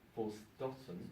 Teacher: the German preference for stottern, which uses the alveolar T